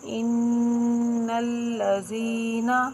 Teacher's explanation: آپ کو اپنی آواز ناک میں جاتی ہوئی محسوس ہوگی، اسی کو غنّہ کہتے ہیں۔